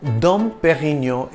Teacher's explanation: it's a soft D in Dom and you don't enunciate the N at the end of Perino